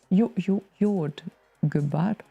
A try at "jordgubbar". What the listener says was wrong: Jordgubbar. So that wasn't the intonation thing. It was a pronunciation thing. Every foreigner does that. Like super emphasizes the last part.